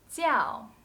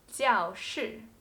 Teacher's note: when it is used as one part of a noun it should be pronounced jiao fourth tone